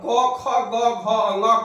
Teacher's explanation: क ख ग घ अंग का उच्चारण कंठ से